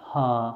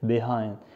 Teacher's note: لاحظ هو في الاساس voiceless، لكن بين two vowels بيتحول ل voiced